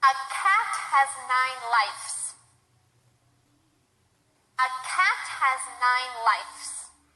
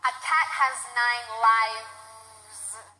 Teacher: Instead of a V sound, I put an F sound. This isn't also a common mistake because I think we know that life is with an F and we just want to keep the F sound in there, but that's wrong.